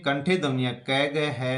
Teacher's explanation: कंठ ध्वनि से तात्पर्य गले से है। क वर्ग का उच्चारण गले से होता है, इसलिए इन्हें कंठे ध्वनियां कहते हैं।